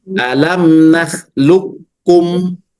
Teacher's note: Jadi qafnya tidak lagi isti'la Ibu ya. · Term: idgham kamil